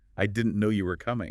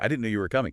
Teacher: try it with a little lift, a little emphasis on no and coming like I didn't know you were coming.